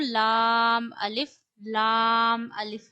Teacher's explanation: लाम अदा होता है आपके ऊपर वाले दांतों के मसूड़ों से यानी जो ऊपर के दांत हैं उनकी जड़ों के साथ जो नरम मास है वहां जबान लगानी है और लाम पढ़ना है ला अलिफ याद रखिए लाम अलिफ में लाम में हमेशा ला की आवाज आती है लाम लाम अलिफ यह भी लाम अलिफ है।